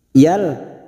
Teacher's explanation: Yal, fathah tanwin bertemu lam, namanya bacaan idgham bila gunah. Masuk pada huruf lam, hanya masuk tanpa mendengung, tanpa ditekan lama-lama, hanya masuk, namanya bacaan idgham bila gunah.